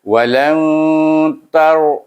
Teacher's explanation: oleh kerana nun sukun bertemu dengan huruf ta, huruf ikhfa, maka kita baca walan itu dengan ikhfa hakiki. Jadi bunyinya bukan walan.